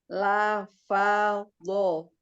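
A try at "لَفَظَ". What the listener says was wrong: Nah, huruf lamnya jangan di la, enggak angkat. La, fa, dho.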